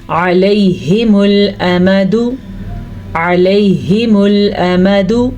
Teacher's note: میں نے حمزہ میم دال ان دونوں کے اوپر حرکتیں کے حساب سے لمبا نہیں کیا